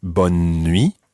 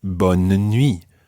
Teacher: Sometimes it might be bonne nuit, almost with a kind of skipping N in the middle, or other times it may be bonne nuit, with almost a mini syllable in the middle there